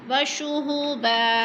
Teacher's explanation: दो ज़बर को वक़फ़ की सूरत में एक ज़बर में बदल कर पढ़ेंगे